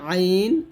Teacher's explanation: তো আইন গলা চিপে বলতে হবে